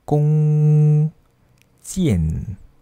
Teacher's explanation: Anda boleh anggap fonem akhir nasal ini mempunyai bunyi yang dengung